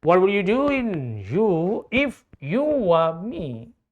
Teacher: you start with high intonation and you lower your intonation, your voice, and at the end of the question, your intonation should be falling. In question, your voice should fall. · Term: falling intonation